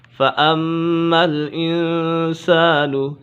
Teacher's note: میم مشدد ہے، میم مشدد میں ہمیشہ غنہ ہوتا ہے